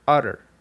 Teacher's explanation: in the word utter, the T's are pronounced not with a T sound, but instead with a R sound